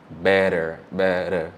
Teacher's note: that t sound that they use is kind of like a D sound that is the r sound in Spanish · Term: single R sound